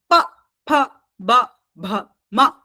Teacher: प वर्ग ये ओष्ठ के उच्चारण स्थान होते हैं